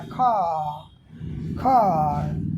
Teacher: आर का उच्चारण नहीं हुआ, लेकिन जो आ है वही लंबा हो गया, खा खार। जैसे बटर, यही लंबा हो गया बटर, लेकिन बटर नहीं। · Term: वावेल लेंथनिंग